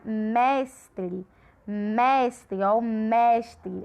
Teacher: A gente fala com maior intensidade. E aqui a sílaba é a penúltima, então ela é paroxítona também.